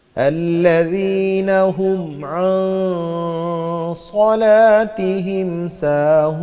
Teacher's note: صاد میں بھی سیٹی کی آواز ہے لیکن صاد کی آواز موٹی ہے اور سین کی باریک ہے